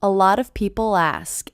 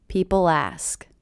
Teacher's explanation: A lot of people ask, and I do hear that L as really linking to the beginning vowel sound.